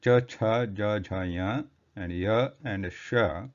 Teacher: Like Ichu Yashanam Talahu, that means for the letters E and the letters which are in the Ch series, that is Ch, Cha, Ja, Jha, Ya, and Ya and Sha, for these the place of origin is Talu, which is like the palate portion of the, just behind the top part of the oral cavity here.